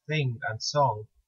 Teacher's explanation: a normal nut sound followed by a normal gut instead it's a single indivisible sound of its own that is closely related to a straight up nuh but formed further back in the mouth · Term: engma